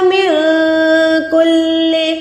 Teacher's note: میں آواز کو چھپا رہی ہوں، اس نون ساکن کو چھپا کے ادا کر رہی ہوں۔ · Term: اکفا